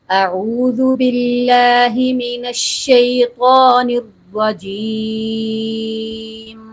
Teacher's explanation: تو کیا کرنا ہے, نرواجیم میں را میں اضافہ نہیں کرنا, اور جیم کی آخر میں میم کی آواز کو کلیئر کرنا ہے, واضح کرنا ہے. ٹھیک ہے, اب پوری تعوذ کو پڑھوں گی.